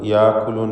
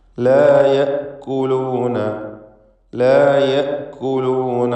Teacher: യഅ്കുലൂൻ എന്നായി പോകരുത്, യാക്കുലൂൻ എന്നൊന്നും ആവരുത്. യഅ്കുലൂൻ ഹംസ ഷിദ്ദത്തോടുകൂടി ഉച്ചരിക്കേണ്ട അക്ഷരമാണ്